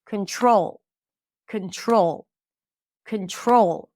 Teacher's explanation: In the word control, the primary stress is on the second syllable.